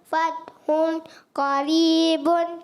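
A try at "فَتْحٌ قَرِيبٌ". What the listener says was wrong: اچھا غنہ کریں گے نہیں کریں گے؟ آپ نے کیا ہی نہیں. آپ کہہ بھی رہے ہیں غنہ کریں گے مگر آپ نے کیا نہیں تھا.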